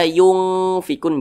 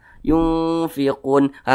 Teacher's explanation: maka dikatakan ausat nah sehingga ketika Kita mengucapkannya itu cara membacanya itu disamarkan dan juga didengungkan